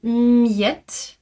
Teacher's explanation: je garde mes lèvres serrées un peu plus longtemps, quelques dizaines de millisecondes de plus. En plus, je prépare ma langue euh à la prononciation de y.